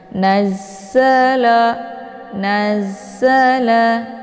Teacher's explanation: nunnya langsung dileburkan ke dalam huruf Za dengan cara ditekan sedikit naz Nazala ya Za ini sifatnya adalahofir jadi dia ada desis · Di sini ada za yang bertasydid, ya. Cara bacanya, nunnya langsung dileburkan ke dalam huruf za dengan cara ditekan sedikit.